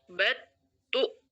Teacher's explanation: jadi langsung suaranya ke ta suara lamnya hilang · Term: idghamkan